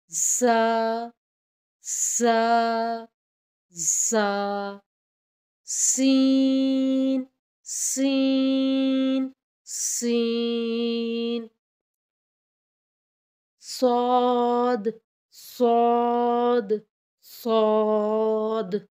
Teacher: ज़ा, सीन, सौद को हुरूफ़ सफ़ीरिया कहते हैं, यानी इनकी आवाज़ इस तरह से अदा होती है जैसे सिटी की आवाज़। ज़ा और सीन सख्ती से अदा होते हैं, जबकि सौद थोड़ा मोटी आवाज़ में अदा होता है। · ज़ा और सीन सख्ती से अदा होते हैं, जबकि सौद थोड़ा मोटी आवाज़ में अदा होता है। ज़ा, सीन, सौद अदा करते हुए ज़ुबान की नोक और दोनों दांतों के अंदरूनी किनारे से अदा होते हैं, सामने के दोनों दांतों के अंदरूनी किनारे से अदा होते हैं।